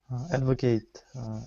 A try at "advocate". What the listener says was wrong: Okay, and as far as pronunciation goes for that word, we would say instead of advocate, we say advocate. We have as a verb, the way you pronounced it is correct. So we have to advocate, but as a noun, it's an advocate.